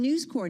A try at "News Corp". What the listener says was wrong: God, for 20 years we've been going back and forth about this, but I tell you it's Corp. You can pronounce the P.